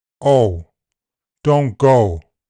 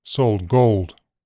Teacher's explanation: in general American o has a midback rounded starting point